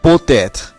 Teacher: পো এর শেষে অনুচ্চারিত তে এত এর শুরুতে যে এ স্বরধ্বনি রয়েছে তার সাথে মিলে উচ্চারিত হয়েছে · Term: সন্ধি